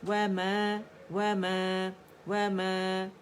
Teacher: میم کا اپنا فطری ایک کاؤنٹ کا غنہ تو ہم ادا کریں گے، دونوں ہونٹوں کو خشک سے آپس میں ملا کر